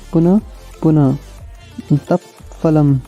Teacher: जब विसर्ग के बाद प फ वर्ण होते हैं तब अर्ध विसर्ग उच्चारण होता है। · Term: उपध्वनि